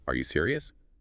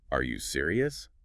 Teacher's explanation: It barely sounds like a question. But add that little upward flick at the end